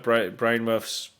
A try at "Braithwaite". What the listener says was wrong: Do you mean Braithwaite? It sounded like Brainmouth. It sounded a bit of a combination. It sounded like a weird love child of Braithwaite and Bournemouth Football Club.